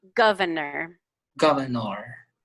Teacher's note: we don't even pronounce that extra r really